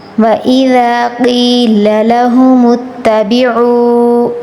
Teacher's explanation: واو کے پیچھے پیش آیا حرف مدہ، اس کو کھینچ کر پڑھیں گے تھوڑا سا